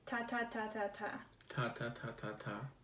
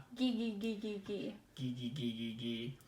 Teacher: I didn't hear any nasal air emissions on those voiceless portions or any hypernasality on the voiced portions